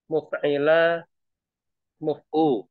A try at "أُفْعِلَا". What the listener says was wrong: أفعلا. بukan ميم lagi.